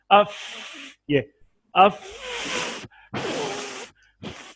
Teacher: فا کی ادائیگی میں ایک سانس سا نکلے گا، خفی سی آواز